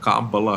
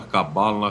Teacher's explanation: Aí, provavelmente os rabinos, os especialistas vão vão se retorcer porque tem que ser oxítona. Espanhol é proparoxítona, em português é paroxítona, né?